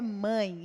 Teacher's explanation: E nós precisamos das fossas nasais, o som sai pelas fossas nasais e também pela boca. Então, nós temos aí o ditongo nasal.